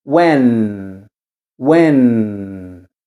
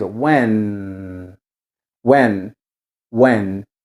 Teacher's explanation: o N, ele também finaliza tocando a língua no céu da boca. Fica when, when.